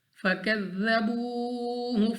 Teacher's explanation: تو یہاں پہ ہمارے پاس ذال نرمی کے ساتھ پڑھیں گے، واو ساکن سے پہلے پیش، واو مدہ کھینچ کر پڑھیں گے، 2 سیکنڈ تک، 2 حرکات کی مقدار تک ہم نے اس کو کھینچنا ہے۔ عین کو مخرج سے ادا کریں گے، قاف مستعلیہ میں سے ہم نے اس کو موٹا پڑھنا ہے، پر پڑھنا ہے، را کے اوپر پیش ہے، ہم نے اس کو موٹا بھی پڑھنا ہے، اور واو ساکن سے پہلے پیش ہے تو ہم نے اس کو کھینچ کر بھی پڑھنا ہے۔